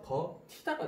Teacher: 겉히다는 디귿과 히읗이 합쳐져서 거티다가 되고요. 이 t가요, 그러니까 t가 치로 변하는 게 국외음화예요. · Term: 거센 소리 내기